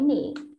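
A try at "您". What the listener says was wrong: Để nín. Chứ xin tỉ, chứ này là nín không phải nỉ đâu.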